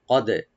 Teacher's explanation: কফটাকে right দিয়ে একটু deep করে, তাহলে আমরা কলকলা করব